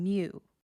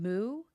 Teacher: Like the difference between moo and mew. Mew is slenderized. Moo is broad.